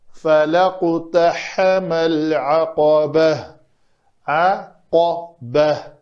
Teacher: اگر یہاں پہ بھی ہم نے وقف کیا تو کیا پڑھا اس کو فَلَقْتَحَمَ الْعَقَبَةَ، عَقَبَةَ، با پتلے میں سے ہے، قاف جو ہے وہ پر حروف ہے، اس کو پر کرنا ہے، وہ جو لوتھڑا ہے اس کو کوے کو لگنا چاہیے تالو کے ساتھ، تو یہ قاف ادا ہوتا ہے۔